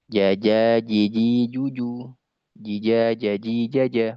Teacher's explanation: huruf jim, huruf shin dengan ya itu salah satu tempat makhraj, yaitu di tengah lisan